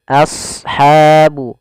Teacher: Kemudian ashabun nar, lafal asha di sini huruf shad agak tebalkan, a-nya tipis